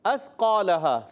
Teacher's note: सा की अदायगी सीटी नहीं अदा होगी। सा ज़बान का सिरा ऊपर के दांतों के नून किनारे से सा अदा होता है।